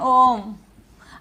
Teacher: जिसमें दीर्घ स्वर से भी ज्यादा का समय लगता है